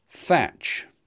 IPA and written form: θætʃ (thatch)